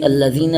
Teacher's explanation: یا مدہ ہے، اس کو ایک الف کے برابر کھینچیں گے